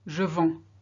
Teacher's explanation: you can't hear the D, can't hear the S, but they're there.